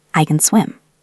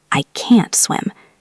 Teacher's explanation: So the positive disappears and the negative stays strong.